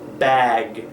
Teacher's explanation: be certain that we are pronouncing bag, and that there is time for those vocal cords to vibrate